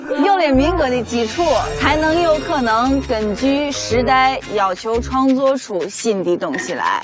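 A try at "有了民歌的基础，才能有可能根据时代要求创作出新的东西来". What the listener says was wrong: 感 觉 虽 然 发 音 很 标 准 ， 但 是 不 应 该 用 那 种 气 势 念 出 来 。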